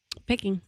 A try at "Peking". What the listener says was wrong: Sounds like you said picking duck. Yeah, Peking.